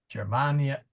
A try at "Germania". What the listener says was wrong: no it's a soft G